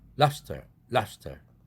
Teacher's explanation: 그래서 lobster가 lobster 이렇게 프로 바꿔서 발음된다 이런 얘기인데 우리가 느낄 때는 진동이 되는지 안 되는지는 정말 정밀 기계를 대고서 측정해보지 않는 한 알 수는 없지만 쉽게 느껴지지는 않지만 이렇게 브가 푸 사운드로 진동 없이 발음된다. 스의 영향을 받아서 무성음화되었다.